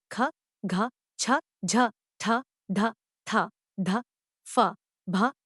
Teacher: के उच्चारण में मुख वायु ज्यादा मात्रा में निकलती है यानी इनके उच्चारण में श्वास बल अधिक होता है या यं कहे कि हवा का आधिक्य होता है महाप्राण व्यंजनों · महाप्राण व्यंजनों के उच्चारण में मुख वायु ज्यादा मात्रा में निकलती है यानी इनके उच्चारण में श्वास बल अधिक होता है या यं